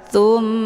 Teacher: Cara bacanya, huruf sa-nya dileburkan ke dalam huruf mim dengan cara ditekan kemudian ditahan lebih kurang 2 kali ketukan. Tsumma, hukum bacaan ghunnah musyaddadah dibacanya sambil didengungkan